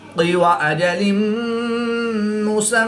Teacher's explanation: دو زیر کی تنوین کے بعد میم حروف یرملون میں سے ہے تو یہاں پر ادغام مع الغنہ ہوگا، یعنی غنہ کر کے پڑھیں گے۔ میم مشدد میں ہمیشہ غنہ ہوتا ہے تو یہاں پر ہم غنہ آنی کریں گے۔